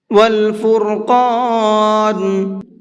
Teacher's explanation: یہاں پر را کو بھی اور قاف کو بھی دونوں کو منہ بھر کے پڑھیں گے۔